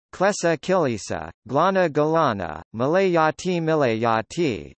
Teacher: i may be inserted between a consonant and l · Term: epenthetic vowel